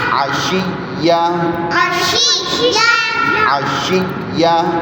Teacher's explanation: شد کی وجہ سے سختی آ جائے گی، غصہ آ جائے گا، تھوڑا رک کے پڑھنا پڑے گا